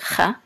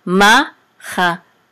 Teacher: So ma, and this is a chet with a chatef patach. This is a reduced patach, so just a quick cha